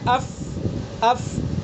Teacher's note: جب ہم فا کو ادا کریں گے تو آواز بند نہیں ہوگی بلکہ آواز جاری رہے گی اور نرمی ان کے اندر ہوگی